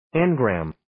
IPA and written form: 'en,græm (Engram)